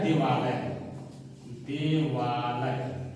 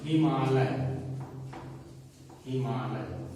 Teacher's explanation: अ plus आ दोनों मिल करके आ बन जाएंगे